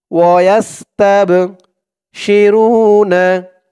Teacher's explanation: মিন ফাদলি ওয়ায়াস্তাবশিরুনা, ওয়ায়াস্তাব, তাব, তা দিয়ে বা ধরবে, এই বাটা হচ্ছে কলকলার হরফ, ধাক্কা দিয়ে পড়তে হবে।